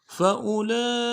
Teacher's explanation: لام کے اوپر کھڑا زبر بھی ہے، لام کے اوپر مد اصلی بھی ہے، تین الف مقدار میں کھینچیں گے